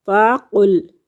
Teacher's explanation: قاف پچھلا حصہ زبان کا جو ہے وہ اٹھے گا اور تالو کے نرم حصے کو مس کرے گا تو قاف ادا ہوتا ہے